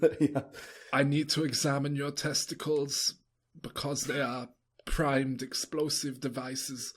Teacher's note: they'll be saying this in this kind of breathy German accent